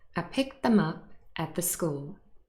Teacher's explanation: Them will be reduced and contains a schwa. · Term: weak form